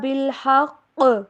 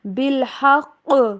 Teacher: قاف کے اوپر زور بھی دینا ہے کیونکہ یہاں پہ تشدید ہے اور ساتھ میں قلقلہ بھی کرنا ہے